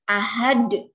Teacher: dia mantul di akhir kalimat sehingga disebut qalqalah kubro karena pantulannya dia harus terdengar dengan jelas.